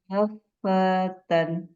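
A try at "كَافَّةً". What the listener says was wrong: Nah, fa-nya kepanjangan. Fata. Nah, tinggal dialirkan, Bu. Fa. Fatan. Fa-nya jangan kepanjangan.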